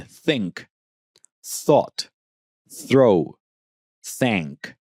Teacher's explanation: Yeah, that th the sound is interdental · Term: th sound